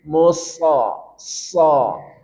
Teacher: arah dorongan suara huruf sad ke langit-langit mulut. Musa, sa, sehingga dia tebal.